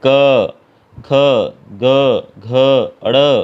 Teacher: जैसे क वर्ग के अंदर हमारी जो है जीभ कंठ को टच करती है